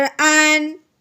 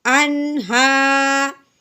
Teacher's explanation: नून साकिन पे गुना बिल्कुल नहीं करना, बल्कि बगैर गुन्ने के इजहार के साथ पढ़ना है। हमज़ा नून ज़बर अन, हा खड़ी ज़बर हा।